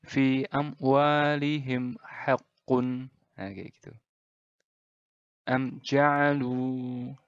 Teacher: izhar syafawi ini dibaca dengan jelas tanpa dengung seperti izhar biasanya